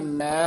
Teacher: ਮੈ ਉਚਾਰਨ ਕਰਨਾ ਨਾਸਕੀ ਉਚਾਰਨ ਮੈਂ ਨਹੀਂ ਕਰਨਾ ਹੈ